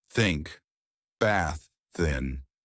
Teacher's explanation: Put the tip of the tongue gently between the upper and lower front teeth. Blow air out without voice.